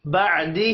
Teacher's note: عین ساکن پر قلقلہ نہیں کرنا، ہا کے نیچے کھڑی زیر ہے، ایک الف کے برابر کھینچ کر پڑھیں گے۔